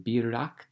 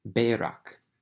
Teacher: Kicks back the doubling into the first vowel, and it changes from a hirek to a tsere. And so it goes from birak to berak, but it's Piel.